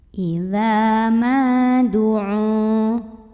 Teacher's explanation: huruf mim yang berbaris fathah kita panjangkan 2 harokat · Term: mad tabi'i